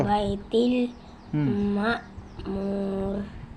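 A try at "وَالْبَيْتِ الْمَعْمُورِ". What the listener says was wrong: Ma'mur. Ayusin mo, ito ay ain. Wal baitil ma'mur.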